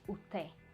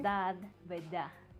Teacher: very common in Cuban slang to reduce the sound and the letter D when it is at the end of a word